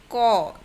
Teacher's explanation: লাগে ব্যঞ্জন বর্ণ উচ্চারণের সময় স্বরবর্ণ উচ্চারিত হয়ে থাকে ঠিক তেমনি ক যখন উচ্চারণ করি তখন অ চলে আসে